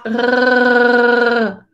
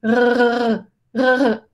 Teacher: se llama la R uvular y se produce haciendo vibrar esta cosita que tenemos allá atrás